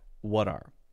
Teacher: because we have the T and it's followed by this vowel sound we can generally change that to a D sound